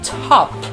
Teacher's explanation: The T in top is aspirated. When we say aspirated, it is pronounced with the sound of a breath, just like the phoneme ha.